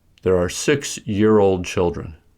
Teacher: To indicate that children is modified by two ideas, both modifying words, 6 and year-old, are stressed and there is a short pause after 6. Also, for rhythm, stress is shifted to year from old